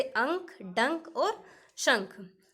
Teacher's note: उच्चारण में हवा केवल नाक से निकलती है और उच्चारण अधिक जोर से होता है तो उसके ऊपर केवल बिंदु लगाया जाता है, ऐसे स्वर अनुस्वर कहे जाते हैं, जैसे अंक, डंक और शंख।